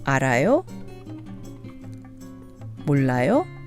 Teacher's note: say the polite informal phrases with Rising intonation